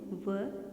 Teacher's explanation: व, जो दांतों और होठों से मिलाने से उच्चरित होता है, इसीलिए इसे दंतोष्ठ ध्वनि कहते हैं।